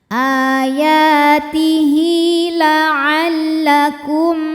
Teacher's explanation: Ayatihi la'allakum ada hukum idhar syafawi, sebab ada mim sukun yang menghadapi huruf selain mim dan ba, yaitu huruf ta. Maka mim sukun ini dibunyikan dengan idhar atau jelas, M tidak ditahan.